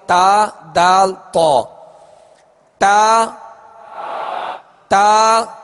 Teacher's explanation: تا کا جو مخرج ہے وہ زبان کی نوک اور اوپر کے دانتوں کی جڑ، اس سے 3 حروف ادا ہوتے ہیں تا دال تو.